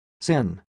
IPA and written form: sɪn (sin)